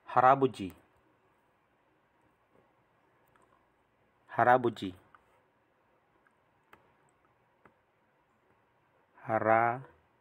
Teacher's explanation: Kasi po, kapag itong symbol, kapag nasa gitna ng dalawang vowels, nagiging R po ang sound